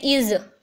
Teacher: इसमें ज आ रही है, स की आवाज़ क्या आ रही है, ज की, तो तब ये वॉइस्ड होगा। अगर ये स की साउंड दे रहा है तो ये वॉइसलेस होगा।